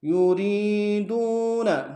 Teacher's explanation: یوری میں یا مدہ ہے، دو میں واو مدہ ہے، دونوں کو کھینچیں گے